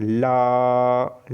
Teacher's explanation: तो ल जो है दोस्तों पार्श्विक व्यंजन की श्रेणी में आता है, क्योंकि इसमें वायु जो है जीभ के दोनों पार्श्वों से निकलती है